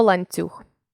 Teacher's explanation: літеру необхідно писати третій вид уподібнення за м'якістю відбувається тоді коли М'який приголосний впливає на попередній твердий приголосний і він теж стає м'яким